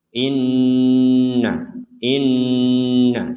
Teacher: Nun bertasdid maka kita baca dengungan baca dengan dengungan Inna Inna inti dari dengungan adalah di rongga hidung kita itu berdengung jadi tidak sekedar in tapi in ada jeda kita beri jeda · tidak sekedar in tapi in ada jeda kita beri jeda itu dua harakat